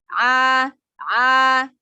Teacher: Jadi huruf ain, makhorijul hurufnya dari tenggorokan bagian tengah. Tidak boleh mengalir ke hidung. Jadi cara mempelajarinya, kita pencet hidungnya ketika mengucapkan huruf ain.